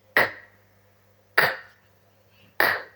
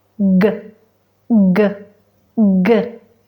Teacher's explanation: La K es sorda y la G sonora.